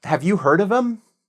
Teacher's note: I said it more as im than em in that case. · So, them, we just say em in this case.